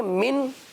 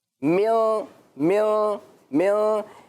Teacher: دیکھیں من یہ تو نارمل ہے، میوں میوں میوں یہ ہے نون ساکن کی آواز کو ناک میں چھپانا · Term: اخفا